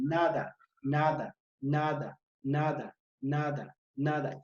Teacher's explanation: la lengua va que va a chocar o va a entrar en contacto con los alvéolos